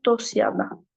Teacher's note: ST-dan sonra samit gələndə t düşür. Olur dosyana.